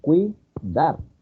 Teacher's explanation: A esta se le llama diptongo homogéneo porque su sonido es igual, ¿sí? O sea, la tonificación de ambas vocales es aguda, es débil, es cerrada